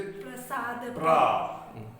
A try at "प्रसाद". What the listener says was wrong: रा पूरा बोल रहे हैं, पा आधा बोल रहे हैं।